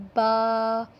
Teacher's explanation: با دونوں ہونٹوں کے تر حصے سے ادا ہوتا ہے